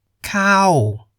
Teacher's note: the falling tone the pitch begins higher than the middle and Falls distinctly